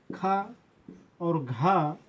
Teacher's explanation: खा और घा महाप्राण होंगे